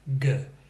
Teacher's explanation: completely at the opposite side in the back of the mouth the back of the tongue comes up pushes against the back of the roof of the mouth